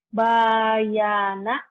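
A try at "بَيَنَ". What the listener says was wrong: Nggak ada yang panjang.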